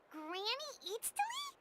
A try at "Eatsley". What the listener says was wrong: Yes, Granny Eatsley. But emphasis on Eatsley, not Granny.